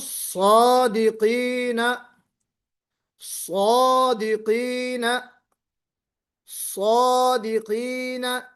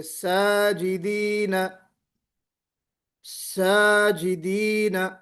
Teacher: اس الف سے پہلے صاد استعلا ہے تو ہم منہ بھر کے پڑھ رہے